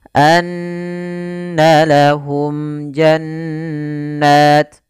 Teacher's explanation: salah tidak dibaca dengan bacaan Ikhfa Syafawi tapi izhar syafawi yaitu suara mimnya harus dibaca dengan jelas dan tidak boleh ditahan